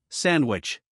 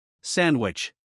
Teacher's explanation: do you notice that you don't hear a strong D sound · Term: drop D sound